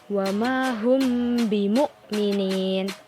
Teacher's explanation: Yaitu jika ada mim sukun yang bertemu dengan huruf ba. Nah, cara membacanya itu dengan berdengung, yaitu mim sukun dibaca bergandengan dengan huruf ba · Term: ikhfa syafawi